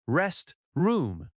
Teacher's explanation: Restroom has stress on rest.